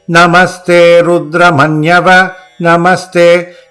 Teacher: the ma, the a sound of the vowel will go up and quickly come down. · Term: swaritam, Swaritam